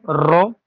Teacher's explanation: তো অবশ্যই র কে বলা হয় কম্পনজাত ধ্বনি